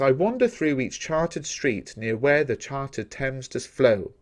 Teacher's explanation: most of the poem is written in iambic tetrameter. This means lines of 8 syllables with alternating stressed and unstressed syllables. You can see the ones in bold are the ones we stress, that we put emphasis on when we're reading.